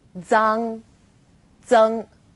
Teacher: For example, Z as in zang or zeng. Its pronunciation is quite similar to the DS sound in English, like cards, but you need to move the tip of your tongue closer to the back of your teeth.